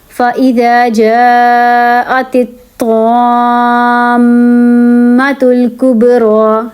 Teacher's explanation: اب اس میم میں یہ جو اوپر میم ہے جس کے اوپر تشدید ہے یہاں پہ ہوگا غنہ، میم والا غنہ ہوگا، ٹھیک ہے. دونوں ہونٹ آپ جوڑیں گے تو بنے گا فَإِذَا جَاءَتِ الطَّامَّةُ الْكُبْرَى.